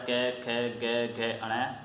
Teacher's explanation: कंठ से बोला जाता है